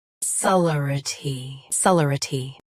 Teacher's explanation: Both US and UK have the same pronunciation of this word. Stress le. Keep r soft and quick.